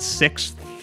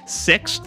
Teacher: you've got to hit the sound of the X which is a KS sound then you need the th sound